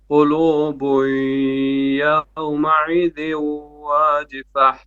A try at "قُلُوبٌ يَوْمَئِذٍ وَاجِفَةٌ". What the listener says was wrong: Okay, مئذ, it's E instead of عين.